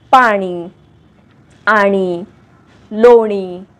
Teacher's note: याचा उच्चार जीभ वरून टाळूला लावून न असा होतो